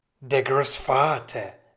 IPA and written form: deːɐ̯ ˈɡʀoːsˌfaːtɐ (der Großvater)